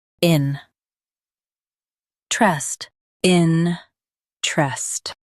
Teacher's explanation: Emphasize in and keep trest light.